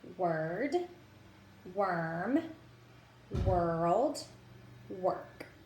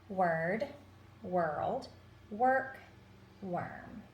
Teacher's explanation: So W plus OR is when we have the schwa sound. We have the strong sound in front of the vowel and the strong sound after the vowel, and we end up having a completely different sound.